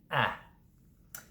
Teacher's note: Then we're going to drop down to E, which is the sound in my head, or I'm going to bed, followed by the last front vowel, which happens to be in the lowest possible position